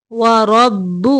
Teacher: را کے اوپر زبر ہے، را کو موٹا پڑھیں گے